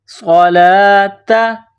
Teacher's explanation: پیدا کرنی ہے، صاد کو موٹا کرنا ہے، وَأَقِيمُوا الصَّلَاةَ، صَلَاةَ، لام کے اوپر کڑا زبر ہے، ایک الف کے برابر کھینچنا ہے